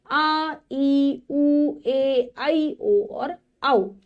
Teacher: जिन स्वरों के उच्चारण में ह्रस्व स्वरों से लगभग दो गुना समय लगता है उन्हें दीर्घ स्वर कहते हैं।